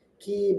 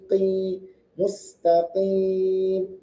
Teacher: Qaf juga tebal. Qi bukan ka tipis. Ki bukan, tapi qi mustaqim.